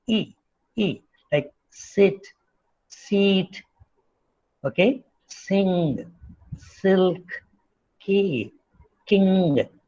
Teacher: So the front part of the tongue moves up and the leaves are in the normal position.